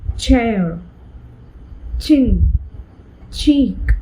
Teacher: another consonant which is a combination of two consonants. A combination of t and sh. We get ch. So ch as in the word chair, chin, cheek, etc.